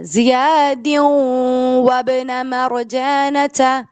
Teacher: نون کو اسکپ کیا، واو کو پک کیا، غنہ کیا